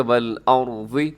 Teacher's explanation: خلق السماوات والارض، یہاں پہ را موٹا پڑا جائے گا، والارض اس میں را ساکن ہے، اس سے پہلے زبر ہے، اس وجہ سے را موٹا پڑا جائے گا